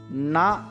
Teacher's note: தொடுகிறது அடுத்து நாவின் நுனி மேல்வாய் பல்லின் அடிப்பகுதியை தொடுவதால் பிறக்கிறது படத்தை பார்த்துக்கொண்டு நா என்ற எழுத்தை உச்சரித்தால் நாவின் நுனி மேல்வாய் பல்லின் அடிப்பகுதியை தொடுவதை நம்மால் உணர முடியும்